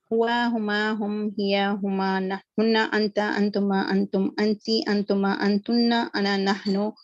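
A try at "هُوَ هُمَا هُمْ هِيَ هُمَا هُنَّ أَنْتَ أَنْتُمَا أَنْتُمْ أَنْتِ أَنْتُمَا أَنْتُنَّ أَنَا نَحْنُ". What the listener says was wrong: Excellent. Sister Shahida, Jazakallah, I think that was really good.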